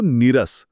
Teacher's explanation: भाषा विसर्गाच्या आधी आलेल्या ई या ऱ्हस्व स्वराला लांबवते, म्हणजेच त्याला दीर्घ करते. म्हणून नीचा नी होतो आणि शब्द बनतो नीरस.